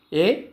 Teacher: కంఠ తాళవ్యములు అనగా కంఠము మరియు తాలువుల నుండి పుట్టినవి